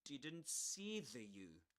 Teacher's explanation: three consonants together. N will be the N, the T, and the S. We drop the one in the middle.